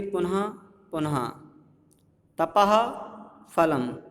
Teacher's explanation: अब विसर्ग का भेद उपदमानीय, मतलब जब विसर्ग के बाद पा फा वर्ण रहते हैं तब अर्ध विसर्ग उच्चारण होता है